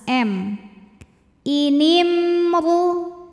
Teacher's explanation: ada mim sukun yang di hadapannya bukan huruf mim bukan juga huruf ba ya maka mim sukun ini kita bunyikan dengan jelas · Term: izhar syafawi